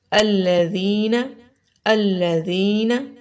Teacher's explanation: تو زال کو زا نہیں پڑھنا، بہت نرمی کے ساتھ، اور سیٹی کی آواز بھی نہیں آنی چاہیے۔